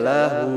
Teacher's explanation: Ini dibaca panjang nih harusnya lahu panjang bukan berhenti